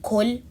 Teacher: pronouncing the qaf as a kaf